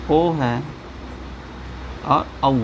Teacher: कंठोष्ठ है, यानी कंठ और ओठ से बोलने जाने वाले